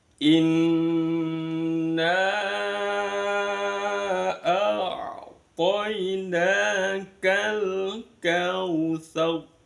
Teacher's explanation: Nada datar naik dan datar lagi.